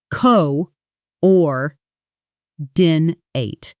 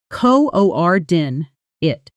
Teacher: when it's used as an adjective, describing things that go together or match, that final syllable shortens and softens into knit.